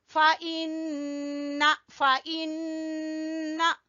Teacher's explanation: नून मुशद्दद का गुन्ना है